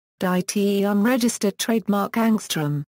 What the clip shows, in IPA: daˈtəŋ